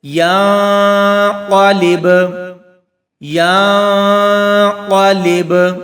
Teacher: تو ناظرین، 2 سے 3 سیکنڈ تک ہم اخفا کریں گے۔ یعنی 2 سے 3 سیکنڈ تک ہم غنہ خفیف کریں گے